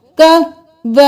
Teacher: बा को हम 6 अलिफ के बराबर खींचेंगे